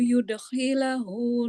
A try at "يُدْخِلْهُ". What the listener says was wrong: Yudkhilhu. Jangan yudkhilahu. Yudkhilhu. Lamnya sukun mati.